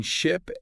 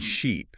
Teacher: the difference between ship and sheep right is all in how long you hold that vowel sound yeah native speakers do this instinctively they do and it can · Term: vowel length